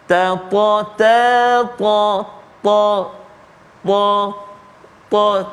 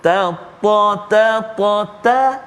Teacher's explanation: huruf ta dia ada sifat isti'la kan, dia dan huruf tebal. Jadi bila kita sebut huruf ta tu, terangkat lidah kita kan.